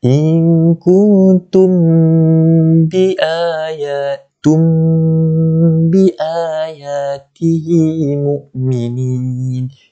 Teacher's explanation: Pertama, kita rapatkan terus. Kita dengung dalam keadaan kita merapatkan kedua-dua bibir atas ni, bibir atas dan juga bibir bawah ni. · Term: ikhfa syafawi